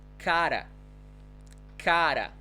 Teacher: anytime the letter R comes between 2 vowels, we're going to say r. It's the vibrating sound